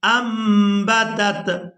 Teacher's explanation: ہم نے نون کو میم کے ساتھ بدل کر ادا کرنا ہے، نون ساکن ہے اور اس کے فوراً بعد با آ گئی ہے، تو یہاں پر اقلاب کریں گے، اس میم کو ادا کریں گے حمزہ میم زبر انبتت سبع سنابل فی کل سنبلۃ۔